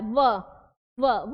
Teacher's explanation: बोलने में क्या प्रयोग हो रहा है होठ का निचला हिस्सा और ऊपर का दांत